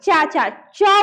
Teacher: च बोलते हैं तो पहली बार जीभ वहां पे तालू में टच होता है